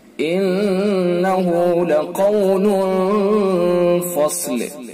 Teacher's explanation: دیکھیں نون حرف مشدد ہے لہذا اس کے اندر غنہ ہوگا